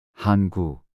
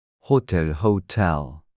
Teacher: to pronounce this sound breathe out air forcefully making a sound similar to H in help